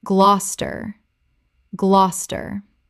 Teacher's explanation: Two syllables only. The middle syllables disappear completely.